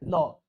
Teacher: ल जो होता है वो दंत है, याद रखिए, वो दांत से होता है